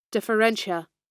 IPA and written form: ˌdɪfəˈrɛnʃiə (differentia)